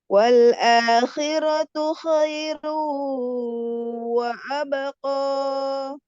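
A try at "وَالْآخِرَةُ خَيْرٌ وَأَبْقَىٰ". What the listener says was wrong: Dari awalnya naik wal akhiratu khairu wa abqa. Nada nada datarnya kayaknya kayak sama dengan nada turun.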